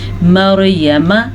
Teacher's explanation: را کو پر پڑھنا اور میم کو قلیل مقدار سے پڑھنا ہے